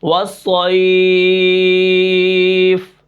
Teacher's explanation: آخر میں اگر وقف ہوگا تو وہاں پر ہم اس کے اوپر مد عارض لین وقفی کریں گے